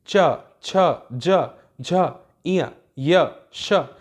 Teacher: बोल के देखिए, च छ ज झ इया य श, इन सब में कहीं ना कहीं आपके तालु का प्रयोग हो रहा है। च बोलेंगे तो जीभ तालु से टकरा रही है, इसलिए ये तालव्य व्यंजन कहलाएंगे।